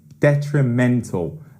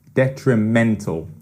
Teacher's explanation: Okay, yeah, so detrimental is an adjective, and it's got an interesting pronunciation as well. 4 syllables, detrimental, and it's that third syllable. Detrimental is the pronunciation of the adjective, and it means it's likely to cause harm or be damaging.